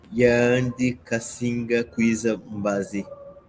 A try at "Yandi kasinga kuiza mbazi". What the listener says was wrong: Cuidado, aquela vogal longa. Yandi kasinga kuiza mbazi.